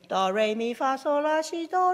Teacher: starting from a low pitch to high pitch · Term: pitch range